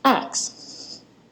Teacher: the SK sound becomes a KS sound in words like ask becoming ax